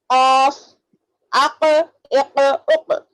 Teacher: زبان کی جڑ کو اوپر تالو سے لگا لو آپ تو آپ کو خاف ادا ہو جائے گا